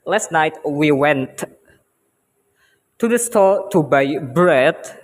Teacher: So because of the speaker want to emphasize the meaning that he was going to the store last night, the word went will possess the stress, more bigger stress than another words